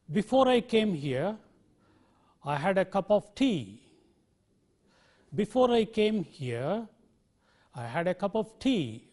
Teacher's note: tone conveys the incompletion of meaning what we do generally is we use a falling tone on the main clause and the rising tone on the subordinate clause